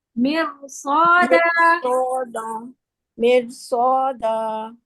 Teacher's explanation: ये रॉ ना एक्सेप्शन है कुरान का रॉ के, यानी कि रॉ साकिन से पहले अगर जेर हो और आगे हुरूफ मुस्तालिया हो तो ये रॉ मोटा पढ़ा जाएगा